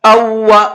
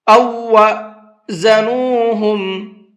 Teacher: اس حمزہ کو دوسرے واو کے ساتھ میں ملانا ہے، پہلا واو نہیں پڑھنا ہے، کیونکہ جب دو لفظ ایک جیسے ایک ساتھ میں آتے ہیں تو پہلے لفظ کو دوسرے لفظ کے اندر مکس کر دیتے ہیں، پھر پہلا والا نہیں پڑھا جاتا ہے، دوسرا والا ہی پڑھا جاتا ہے، ٹھیک ہے۔